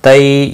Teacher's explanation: तई या लीन है, थोड़ा नरमी के साथ खींच कर अदा करेंगे